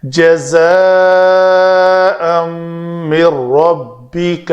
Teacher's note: نون ساکن کے بعد حروف یرملون میں سے را ہے تو ادغام کامل کیا۔ ادغام کامل سے مراد ہے نون کو پڑھنے میں نہیں پڑھا۔